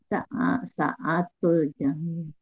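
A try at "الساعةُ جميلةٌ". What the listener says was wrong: jangan saatu, jangan saatu, sinnya yang panjang, halis sa.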